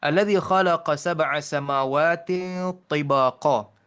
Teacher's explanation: Jadi tanwin di bawah ta itu tak dibaca tin terus. Dia diringankan sedikit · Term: huruf ikhfa